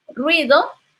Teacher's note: Por motivos de necesidad rítmica se separan dos vocales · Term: diéresis